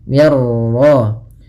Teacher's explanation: Minnya tipis rnya tebal.